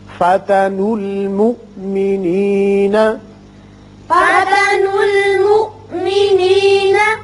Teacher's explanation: یہ آپ کو الف زائدہ نظر آ رہے ہیں. آپ نون کی پیش کو لام سے ملائیں گے اور یہ حمزہ جھٹکے کے ساتھ پڑھیں گے.